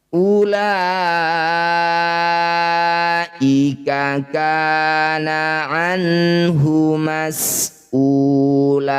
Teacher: Mad tabi'i bertemu dengan hamzah di satu kata, ulaika. Jadilah bacaan namanya mad wajib muttasil. La panjangkan 6 harokat.